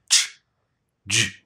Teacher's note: And the main thing to remember is that you have both a stop and that air channel with your tongue